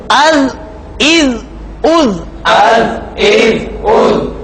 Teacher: اور ذال پڑھتے ہوئے زبان کی نوک دانت کی نوک سے ٹکرائی